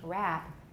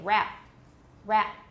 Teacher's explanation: a lot of people have a kind of creak before the final stop or at the same time as the final stop so instead of saying rap with no creek rap many people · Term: glottal stop